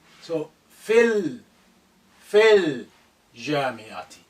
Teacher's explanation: It's fi, lengthening. But here you need to link this lam sukun with fi, with the vowel. So more or less you are passing over the lengthening.